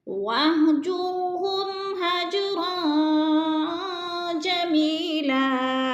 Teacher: वहजुरहुम हज, हज पे कलकला हो रहा है, जीम साकिन है और कलकला में से है तो गुन्ना करेंगे, नाक में आवाज़ ले जाएंगे। را دو زبر رن، تنوین آگے جیم حروف اخفا میں سے ہے تو غنہ ہو رہا ہے. جمی پہ یا مدہ ہے.